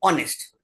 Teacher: ह नहीं बोलेंगे, ओ बोलेंगे, ऑनेस्ट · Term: H is silent